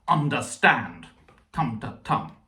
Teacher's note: But you could also say that angrily and say understand, tum, because that first syllable can be stressed or not stressed depending on how you feel